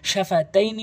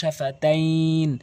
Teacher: মূলত শাফাতাইনি বানান করলে লিনে হরফ কিন্তু টান হয় না, কিন্তু ওয়াকফ করলে লিনে হরফ কিন্তু টান হয়ে যায়।